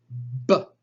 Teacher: the sound of the English letter B, b, is a labial stop.